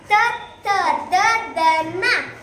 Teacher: ತಾವರ್ಗದ ಅಕ್ಷರಗಳು ಹಲ್ಲುಗಳ ಬಳಿ ಹುಟ್ಟುವುದರಿಂದ ಅವು ದಂತ್ಯ ಅಕ್ಷರಗಳು